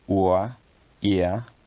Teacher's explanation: lowering diphthongs that go from higher to lower